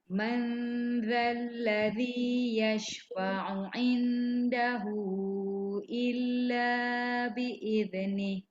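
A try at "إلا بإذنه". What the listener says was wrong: Lidah dah keluar dah betul. Dia punya makhraj. Cuma sifat dia jangan lantun.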